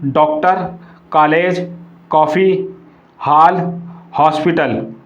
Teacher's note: आ एवं ओ के बीच की आ की ध्वनि